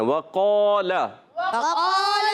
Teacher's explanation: وقال میں ہم نے آخر میں جو لام آ رہا ہے نا, اس کی زبر کو نہیں کھینچنا